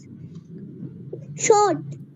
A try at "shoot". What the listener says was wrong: No, it's not short. When there are two O, so we pronounce it like oo. Oo.